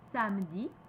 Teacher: A ouvert, very open.